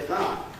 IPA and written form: faə (fire)